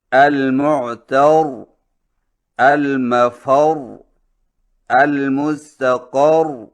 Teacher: وقف اس طرح کریں کہ تشدید باقی رہے اور حرکت کا کوئی حصہ ظاہر نہ ہو